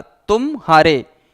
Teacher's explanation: इन दोनों शब्दों के बीच में जो गैप है, इसे ही बोलते हैं अवधान या फिर व्यवधान या फिर विराम या फिर रुकावट। यही है वो। तो वही कहा गया ना कि एक ध्वनि से दूसरे ध्वनि पर जो संक्रमण होता है उसे ही संगम कहते हैं।